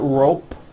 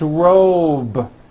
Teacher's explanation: robe also has a voiced B ending it's not rope with an unvoiced P